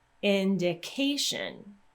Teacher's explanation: the syllable with K is going to get stressed